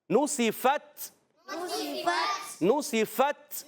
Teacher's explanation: تا شدیدہ محموس حرف ہے، تو سختی کے ساتھ آواز بند ہو جائے، پستی نرمی سے سانس جاری رہے